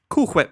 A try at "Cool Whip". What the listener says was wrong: now why are you putting so much emphasis on the H